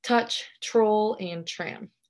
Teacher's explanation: the place of articulation is alveolar and what this means is that the blade of the tongue makes contact with the alveolar ridge when we're producing the sound · contact with the alveolar ridge when we're producing the sound next the manner of articulation is a stop and that means that the airflow is stopped when producing this sound or this phoneme and lastly this is a voiceless aspirated consonant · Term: t consonant